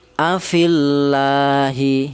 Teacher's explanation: Kemudian contoh lagi, afillahi, yang ini lafal Allah lagi jatuh setelah harokat kasroh, maka lafal Allah atau lam jalalah dibaca tarkik atau dibaca tipis ya.